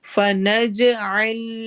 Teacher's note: جیم پر قلقلہ ہوگا